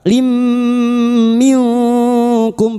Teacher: Idgham big bunah. Masuk dengan mendengung. Masuk pada huruf mim dan mendengung selama tiga harakat.